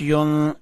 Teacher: یہاں نون کو چھپانا ہے، یعنی نون کے اوپر اخفا کرنا ہے